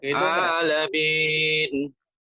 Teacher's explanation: Jangan melalui rongga hidung. Adapun bunyi M-nya pasti melalui rongga hidung karena itu makhrajnya di al-khaisum, tapi vokalnya enggak